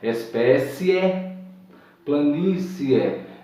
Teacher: é um ditongo crescente, que começa com a semivogal e com a vogal nessa ordem